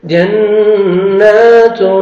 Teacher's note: تنوین کے بعد حروف اخفاء میں سے تا ہے یہاں پہ نوز میں ساؤنڈ لے کے جائیں گے